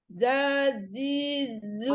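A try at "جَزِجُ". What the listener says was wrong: Oh, masih za gitu. Ja dibuka lagi. Jaji. Masih. Jadi jaji jubaje gitu ya.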